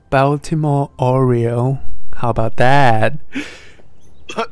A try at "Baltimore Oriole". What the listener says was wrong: You said Oreo like the cookie.